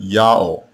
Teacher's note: The letter Wa in this name is not the consonant, it is the vowel marker, and the vowel that was heard was the long O vowel.